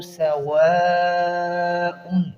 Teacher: سواء پر مد متصل ہے، اس کی ادائیگی 5 الف ہوگی۔